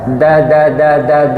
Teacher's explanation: Ujung lidah menempel belakang gigi seri atas. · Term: huruf da